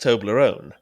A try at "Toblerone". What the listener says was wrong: Yeah, you are. You're putting the emphasis on the wrong syllable, mate. Toblerone. You going Toblerone? It's Toblerone.